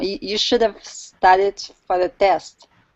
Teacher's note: The grammatical structure words have for and the are reduced. Their vowels are pronounced more neutrally, schwa sound